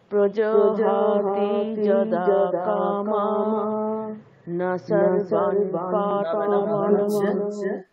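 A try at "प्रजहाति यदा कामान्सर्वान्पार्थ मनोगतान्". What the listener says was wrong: কামান ওখানে থেমে যাবে।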